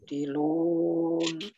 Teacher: Ya, nun ujung lidah. Ya, ujung lidah yang kita tempelkan ke gusi atas.